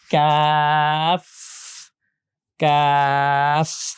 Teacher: খুব ভালো করে খেয়াল করেন, বাংলায় যে ক বর্ণটা আছে যদি একটু মনোযোগ দেন, ক ক উচ্চারণ করার সময় জিহ্বার আমাদের ভিতরের জিহ্বার মাঝখানের অংশটা উপরের তালুর সাথে শক্ত জায়গাটাতে লাগতেছে